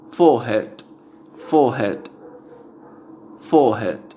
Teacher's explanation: Inglés británico no pronuncia la R y alarga la vocal